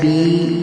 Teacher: third example, با یا زیر بی، یا ساکن سے پہلے زیر، اس کو بھی ایک الف کے برابر کھینچ کر پڑھیں گے